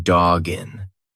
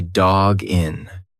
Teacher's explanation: When you've got that hard consonant followed by a vowel, just push the two together like it's one word. So, instead of saying dog in, you're going to say dog in.